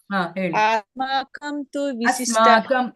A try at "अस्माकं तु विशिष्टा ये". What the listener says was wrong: ಆಸ್ಮಾಕಂ ಅಲ್ಲ ಅಸ್ಮಾಕಂ ತು ವಿಶಿಷ್ಟಾಯೇ